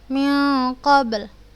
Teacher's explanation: Tetap kita qalqalahkan dan lamnya pun kita matikan, tetap ada suara lamnya